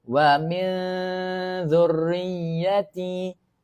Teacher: hujung lidah keluar sedikit di gigi tengah